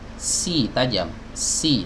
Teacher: sin ini berdesis tajam atau dikatakan juga sofir ya. Dia memiliki sifat sofir.